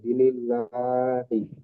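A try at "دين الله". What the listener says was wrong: দিনিল্লাহি নয়, ঠিক আছে, কিন্তু এখানে এখানে দি বলে একালি পরিমাণ টানতে হবে।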